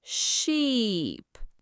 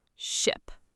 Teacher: Sheep is a long tense sound, e, while ship is short and relaxed, I.